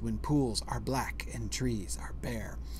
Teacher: four beats per line in an i Amic pattern unstressed stressed when pools are black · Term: iambic tetrameter